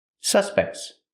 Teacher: The T in suspects is between consonants. So it's a stop T, but you don't really hear it.